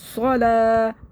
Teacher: صاد کو موٹا کرنا ہے، سو منہ بھر کے.